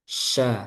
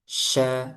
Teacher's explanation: Jadi menyebarnya itu di sekitar makhrajnya. Makhrajnya di tengah lidah. Berarti di tengah lidah tersebarnya. Sya. Jadi harus benar dulu syin-nya.